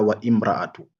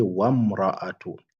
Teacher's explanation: Ouais, donc là, on fait la liaison, c'est wasl. On ne dit pas wa imra'atu.